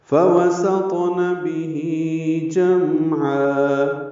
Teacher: جلدی پڑھنا ہے، سین کو طا سے ملانا ہے، طا پر، سین باریک ہے، طا پر ہے، طا پہ قلقلہ ہے ، حروف قلقلہ میں سے طا ساکن، بھی پیچھے پڑھ چکے